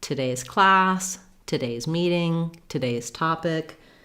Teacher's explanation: So if I'm talking about today's class, today's meeting, today's topic, you can hear how there's almost no vowel at all in that first syllable · But if we're saying today's, we have a different stress pattern in that in the word today, the stress is on the day syllable. And we don't use an oo in today, we use an sound. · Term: reduced vowel